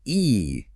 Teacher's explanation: my tongue is high and my lips are pulled back